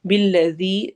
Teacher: ذال کو نرمی سے پڑھنا ہے اور مد کرتے ہوئے پڑھنا ہے